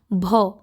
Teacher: भ में हवा निकल रही है